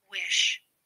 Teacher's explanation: Two fricative sounds are palatal sounds, which are made with the front part of the tongue on the hard palate, or roof of the mouth, behind the alveolar ridge. The sh is a voiceless fricative consonant sound.